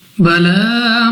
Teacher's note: لام پر کھڑا زبر ہے، تو لام کو 2 سیکنڈ تک کھینچ کر پڑھنا ہے